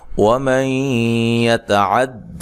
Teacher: یہاں نون ساکن کا ادغام مع الغنہ ہے